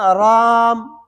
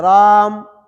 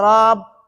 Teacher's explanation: یا الف کو ناک میں لے جانا، یا الف کے بعد جو ہے نا منہ بند کر دینا، رام، دیکھو میم بن گیا رام، اور اگر ناک میں نہیں لے جائیں گے تو با بن جائے راب، با بن جائے گا، تو ایک حرف زیادہ ہو جائے گا۔